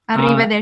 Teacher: when you have the R sound, you have to roll your R's.